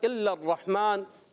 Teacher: لام مشدد، را مشدد، ذرا مشدد حرف رک کر ادا کرتے ہیں